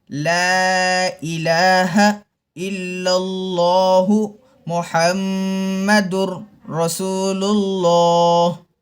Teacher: دو لام کو موٹا پڑھنا چاہیے، گول ہونٹ کر کے موٹا پڑھنا چاہیے۔ لا الہ الا اللہ محمد، ہم میں میم میں غنہ کرنا چاہیے، ہونٹوں کو بند کر کے ناک سے آواز آنا چاہیے۔